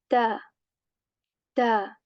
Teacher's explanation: Tip of the tongue touches the back of our upper teeth lightly. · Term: ta letter